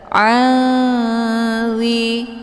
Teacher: Cara bacanya, nunnya disamarkan kemudian siap-siap menuju ke huruf dha. · Jadi nun ini bagaikan bacaan yang digantungkan. Hukum bacaan ikhfa awsat dibacanya sambil didengungkan.